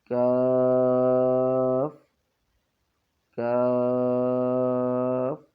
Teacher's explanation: یہ قاف اور کاف یہ دونوں حروف بھی 5 الف کے برابر کھینچے جاتے ہیں